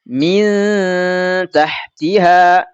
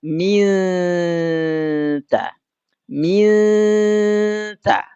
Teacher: Nah, maka suaranya wujud lidah kita langsung bersiap-siap mengucapkan huruf ta. Langsung berada di makhrajnya ta. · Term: nun mati ketemu ta